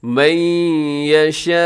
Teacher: یشاء کے اوپر جو مد ہے یہ بڑی مد ہے، متصل واجب 4 سیکنڈ تک لازمی لمبا کیجیے گا ، من یشاء الی صراط مستقیم، یہاں صراط، یہاں سب کے